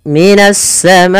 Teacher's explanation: Karena datangnya huruf hamzah setelahnya, maka dia menjadi 4 harokat dan biasa ditandai dengan tanda yang seperti ini. Ini kita memanjangkan untuk hukum tajwid mad wajib muttasil sepanjang 4 harokat atau 5 harokat.